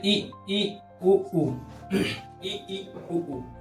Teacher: जिनका उच्चारण करते समय मुख न के बराबर खुलता है उसे संवृत स्वर कहते हैं। ठीक है, मतलब मुख खुलता है मतलब न के बराबर, जैसे ई उ ई उ।